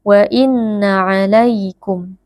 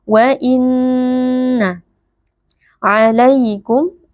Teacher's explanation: Nun bertasydid wajib dibaca dengan ghunnah yang ditahan sebentar tidak boleh langsung dibaca WA innaaikum tapi kita tahan sebentar dengungnya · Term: gunnah